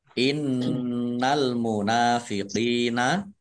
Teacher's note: nun tasdid dibaca gunah atau mendengung ditahan biar tampak dengungannya